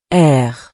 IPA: ʁ